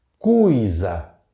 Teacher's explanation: Esse O e esse I formam um ditongo decrescente, vogal e semivogal.